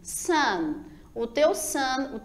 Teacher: tua ponta da língua ficou em cima, na parte superior do teu dente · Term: pronúncia da letra N